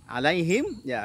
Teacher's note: huruf mim punya sifat tawassut, diantaranya harus dialirkan sedikit bunyi mimnya.